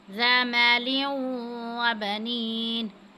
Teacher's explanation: تنوین کے بعد واو آ رہا ہے تو یہ حروف یرملون میں سے ہے، تو یہاں پہ ہم ادغام کی صورت میں غنہ کریں گے۔ ذا مال وبنين، اذا الف سے پہلے زبر ہو تو حروف مدہ میں سے آتا ہے، زال کو ہم نرمی کے ساتھ ادا کریں گے۔